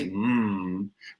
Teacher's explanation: THE Ms AND THE Ns, THE NASALS, AS THEY'RE CALLED, WHERE THE SOUND IS REALLY COMING OUT OF THE NOSE